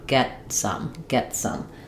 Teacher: Um rather than get some, it's going to sound like get some. That t is basically unreleased. It just releases right into the s sound. · It's unaspirated. I'm going up to make that T and then just moving that right into the next sound. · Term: unreleased t, stop T